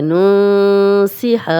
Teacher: اب نون ساکن آگے سین آ گیا تو یہاں غنہ کریں گے، اور یہ اخفا کا قاعدہ ہے، اور یہ بھی اخفا کا قاعدہ ہے۔